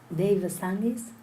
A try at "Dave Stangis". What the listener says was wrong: Dave Stangis. Stangis. You don't say Stangis like in Spanish.